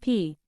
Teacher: the two lips are pressed together and when the air pressure is released after the closure it creates a short burst of sound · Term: bilabial